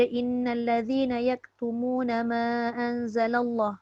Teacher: Kalimah Allah tu dibaca dengan taghliz, iaitu menebalkan huruf lam pada kalimah Allah.